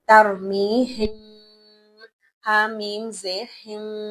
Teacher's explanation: میں نے میم کی اصل آواز کو چھپا دیا اور وہاں پر گنگناہٹ کر دی ، کیوں؟ کیونکہ اس کے بعد جو دوسرا لفظ ہے بحجارۃ،